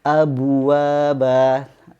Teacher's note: ketika memantulkan huruf ba-nya, ya, ini bibir kita sudah monyong, maka akan terdengar seperti abu